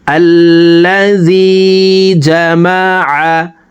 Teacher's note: আইন হরফকে হলকের মধ্যখান থেকে উচ্চারণ করব, কারণ আইনের মাখরাজ হলকের মধ্যখান থেকে হবে।